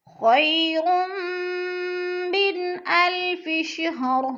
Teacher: 2 پیش تنوین کے بعد میم مشدد ہے، ادغام ملا کر پڑھیں گے سختی سے۔